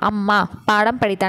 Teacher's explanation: மகர மெய்யெழுத்து இந்த மாதிரி வரும்போது தன்னோட அரை மாத்திரை அளவு முழுசாதான் ஒலிக்கும் இதோட ஆக்சுவல் மாத்திரையோட அளவே அரை மாத்திரை தான் ஏங்க இதோட மாத்திரை அளவு